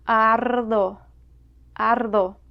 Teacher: A single R next to a consonant also rolls a little.